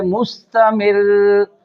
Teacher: रा को बारीक पढ़ना है क्योंकि इससे पहले ज़ेर है, रा मुशद्दद है , और रा को अपने मखरज में दबा कर रखना है।